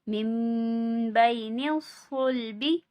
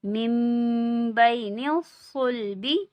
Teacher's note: صاد کو پر پڑھیں گے یعنی کہ موٹا پڑھیں گے اور میم پہ غنہ کریں گے